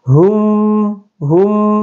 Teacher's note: huruf mim sukun ini dibaca dengan jelas tidak dengung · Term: izhar syafawi